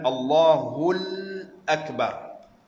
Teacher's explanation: Jadi lam itu tak boleh diidghamkan ke dalam hamzah. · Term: hukum izhar